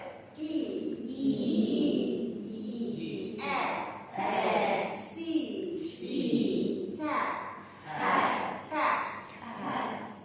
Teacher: We raise the front part of the tongue. E and A are described as front vowels.